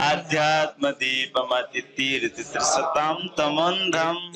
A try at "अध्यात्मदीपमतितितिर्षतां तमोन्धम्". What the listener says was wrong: एक ती खा गए। अध्यात्मदीपमतितितिर्षतां तमोन्धम्